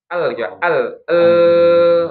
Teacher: lam sama ro itu makhrajnya kan ujung lidah bertemu dengan gusi ya. Ujung lidahnya itu kan yang bagian sininya nih.